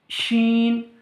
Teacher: জিভের মধ্যখান উপরের তালুর সাথে লাগিয়ে উচ্চারিত হয়